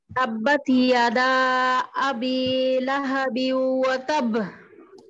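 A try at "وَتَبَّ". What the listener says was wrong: না না, এক বায়ের মতো উচ্চারণ হয়ে গেছে, ওয়াতাব। ওয়াতাব ওয়াতাব ওই শেষে কলকলার আওয়াজ ছেড়ে দিতে হবে ওয়াতাব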